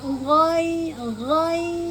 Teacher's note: G pastikan eh ujung tenggorokan kemudian eh keluarnya seperti eh berkumur ya G bukan ge